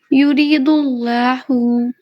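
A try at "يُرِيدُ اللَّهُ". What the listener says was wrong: और इसमें दोनों को वही दो सेम मिस्टेक आपकी भी है, दोनों लाम को पुर पढ़िए। युरीदुल्लाहु, जी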